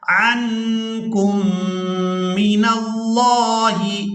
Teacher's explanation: نون ساکن پر اخفا کریں گے، اس کے بعد نون کو میم مشدد کے ساتھ ملاتے ہوئے غنہ کے ساتھ ادائیگی کریں گے۔